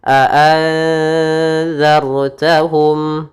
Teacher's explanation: itu za-nya tipis, ra-nya tebalkan